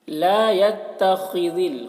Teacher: خاء کو پر کر کے پڑھیں گے، ذال کو باریک پڑھیں گے۔